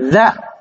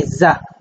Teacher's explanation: Za, la première, on sort le bout de la langue. Za, là-bas, on ne sort pas le bout de la langue.